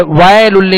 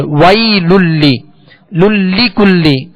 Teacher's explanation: یا لین ہے، اس کو ادا کرتے ہوئے معروف پڑھیں گے، وائے للی نہیں پڑھیں گے، وی للی للی کلی. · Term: حروف لین